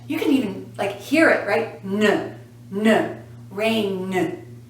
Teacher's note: If you say this word, rain, and put your hand here, notice that the last sound, n, has a vibration.